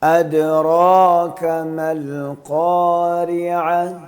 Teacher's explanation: حمزہ کو بھی تحقیق سے پڑھنا ہے اور اس کے بعد دال میں بھی قلقلہ کرنا ہے